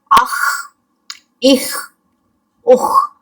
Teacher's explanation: ہم نے اپنی آواز کو حلق سے ٹکراتے ہوئے باہر لے کے جانا ہے اور پھر اس سے ایک خراش کی آواز پیدا ہوگی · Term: خا اور غائن